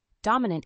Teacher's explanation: the word dominant has three syllables with the stress on the first syllable